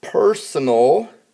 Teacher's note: the p r that part of it is going to be the accented part which means that there's a little more emphasis on that part